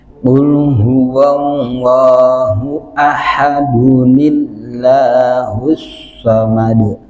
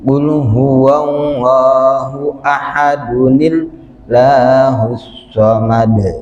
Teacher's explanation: Terus Al-Ikhlas, dalam surat Al-Ikhlas diingatkan kembali, kalau ada tanwin bertemu dengan hamzah wasal, tanwinnya berubah menjadi nun yang dibaca kasrah.